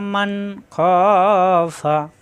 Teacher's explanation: ওয়া আম্মা মিম জবর মামল নুন মান এখানে আসছে নুন সাকিন নুন সাকিনের পরে আসছে খ ইজহার অর্থাৎ স্পষ্ট হবে কোন গুন্না হবে না